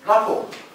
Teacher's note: But don't make this mistake of pronouncing T at the end. That's silent T.